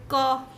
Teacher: जब आप क बोलते हैं क तो जिह्वा जो है उस जो कंठ है उसको स्पर्श करता है